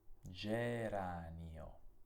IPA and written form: d͡ʒeranio (geranio)